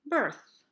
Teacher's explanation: your tongue placement travels forwards with words like month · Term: the traveling tongue